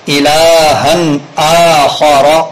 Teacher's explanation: تو حمزہ باریک ہی رہنا چاہیے، خا کے پر کی وجہ سے، خا پر ہونے کی وجہ سے حمزہ پر نہ ہو جائے، الہن آخر نہ ہو جائے، الہن آخر۔